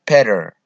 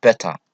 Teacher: Mareykanka waxay leeyihiin better T-da waxay u dhawaaqayaan D. Britishkana caadi weeyaan waxay leeyihiin better.